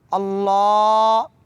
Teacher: اس کو تھوڑا لمبا کریں گے، اللہ، اور ہا کو بھاری پڑھیں گے